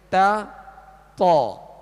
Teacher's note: جیسے تا اور طا، تا اور طا مخارج کی آپ لسٹ میں آئیں گے تو تا دال طا ان کا ایک ہی مخرج ہے، اور وہ یہ ہے زبان کی نوک اوپر کے دانتوں کی جڑ، زبان کی یہ نوک اوپر کے جو 2 دانت ہیں سامنے والے، ان کی جڑ اندر کی طرف جو اس کی جڑ ہے یہ اس سے ادا ہوتے ہیں، یعنی ان کا ایک ہی مخرج ہے، تا دال تو۔